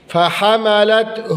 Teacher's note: ہا کی پیش کو لمبا نہیں کریں گے، کھینچیں گے نہیں